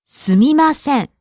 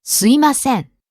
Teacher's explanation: The correct pronunciation is すみません, but you might hear some people pronounce it like すいません. Some people leave out the M sound.